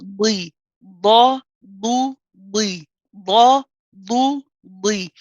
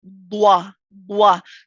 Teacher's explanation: In both the fatha and the kasra version, the ba and the bi, the lips do not come together at all. If your lips come together and when you separate, you'll end up having like a w sound in there, like bwa, bwa.